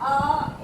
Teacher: आ का उच्चारण स्थान ध्यान रखेंगे, कंठ होता है।